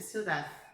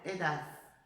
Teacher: Coloca a língua entre os dentes como se fosse um som de S.